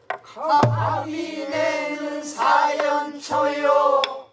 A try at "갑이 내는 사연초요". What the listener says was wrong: 갑이 내는 음이 처지지 말고 조금 잠깐 떠줘 갑이 내는 사연초요